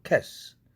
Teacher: 스 앞에 있는 cat 할 때 트음이 무성음이니까 같은 무성음인 스로 발음하는 것이 훨씬 편할 것입니다. 앞에 음이 유성음이면 같은 유성음, 앞에 거가 무성음이면 같이 무성음으로 동화시키는, 즉 무성동화냐 유성동화냐 하는 문제입니다.